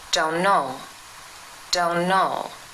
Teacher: The word don't ends in a t sound, but if we say the sentence fast, t is dropped and becomes don't know, don't know.